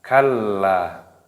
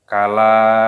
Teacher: terdapat tasdid sehingga dimasukkan ke dalam huruf lam.